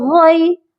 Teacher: غین یا زبر غی، غین کے ساتھ جو یا ہے یہ یائے لین ہے، اور حروف لین کو نرمی کے ساتھ پڑھا جاتا ہے۔